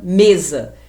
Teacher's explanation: o E é uma sílaba tônica com a vogal fechada, porque eu pronuncio com a boca quase fechada, sem força e sem intensidade